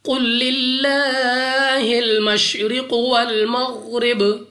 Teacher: قوف مستعلیہ میں سے ہے، موٹا پڑھیں گے۔ لام آف اللہ سے پہلے حرف کے نیچے زیر، تو اس لام آف اللہ کو باریک پڑھیں گے، اپنی آواز کو نیچے گرا کر، را کے نیچے زیر، را کو باریک پڑھیں گے۔